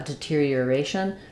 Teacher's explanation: actually use an or there it's more of an R sound the stress in deterioration falls on the a syllable · The stress in deterioration falls on the a syllable. So words that end with shun are always stressed on the syllable before the shun, which is part of what makes this hard.